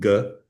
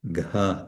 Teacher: so one is without aspiration g and one is with aspiration Ga